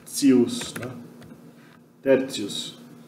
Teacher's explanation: esse T seguido de I mais uma outra vogal, né, quando esse I aqui na verdade é uma semivogal, ele acaba fazendo T ficar ts